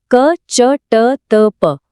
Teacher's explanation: क के लिए कंठ च के लिए तालु ट के लिए मुर्धा त के लिए दांत और प के लिए होंठ